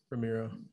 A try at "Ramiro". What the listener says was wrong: You see, you can't even say my name. Yeah, I always pronounce it with a D. I know a lot of people pronounce it with an R, but yeah.